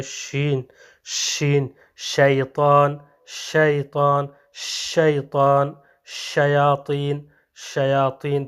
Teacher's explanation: حرف شین کو ادا کرتے وقت منہ سے جو سانس یا ہوا نکلتی ہے یہ کیا ہے منتشر ہو جاتی ہے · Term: صفت تفشی